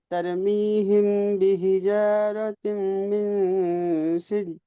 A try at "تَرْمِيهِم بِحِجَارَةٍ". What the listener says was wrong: এখানে তারমিহিম, এখানে যে মিম সাকিন আছে এটা কিন্তু করতে হবে, মিম সাকিনের পরে বাস।